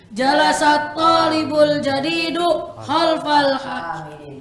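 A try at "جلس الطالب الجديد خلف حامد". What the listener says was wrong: Enggak ada alif lamnya.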